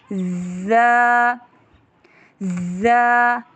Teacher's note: را، زا، زبان کا سرا سامنے کے دو نیچے ثنایا سفلی دانتوں کے سروں کے نزدیک کریں گے اور اوپر والے دو دانتوں کو نیچے والے دو دانتوں کے ساتھ معمولی لگا کر تیز آواز سے ادا کریں گے